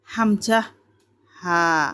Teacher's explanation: এক নম্বর মাখরাজ হলকের শুরু হইতে হামজাহ হা